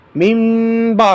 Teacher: نون ساکن کو میم کے ساتھ بدلیں گے، میم با پڑھیں گے۔ پہلے جب اس کا ہجا کریں گے اس وقت من ہی پڑھیں گے، لیکن جب آگے با کے ہجے کر لیں گے تو جب اس کو من کو آگے ملائیں گے تو پھر اس وقت اس کو نون کے میم کے ساتھ بدلیں گے۔ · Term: اقلاب